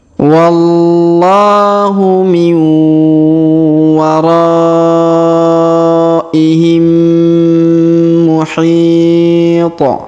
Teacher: Huruf mim sukun bertemu dengan mim bertasdid, maka mim sukunnya kita leburkan ke huruf mim bertasdid ya.